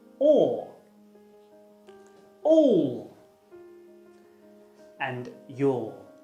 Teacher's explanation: its technical name is the mid-back rounded vowel it's similar to the off sound but the two little dots